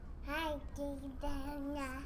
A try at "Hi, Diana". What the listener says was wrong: Put your tongue away. Talk normal. Say hi, Diana.